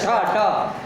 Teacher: ठ ठ ठ में महाप्राण होता है